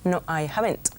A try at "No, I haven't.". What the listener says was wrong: No hay. No, I haven't. La N más al final no la oigo bien.